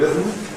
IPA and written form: ˈrɪðm̩ (rhythm)